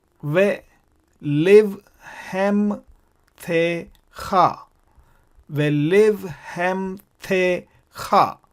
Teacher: So this is the vocal schwa because it occurs in the beginning of the word.